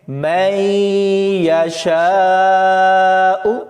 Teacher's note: اس آیت میں یہ لفظ دیکھیں، مَن یشاء، مَن میم کو یا کے ساتھ ملائیں گے، اس میں نون ساکن ہوگا اور یا پر غنہ کریں گے